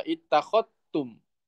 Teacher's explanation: Kalau syu'bah bacanya dengan idgham, zalnya tidak terbaca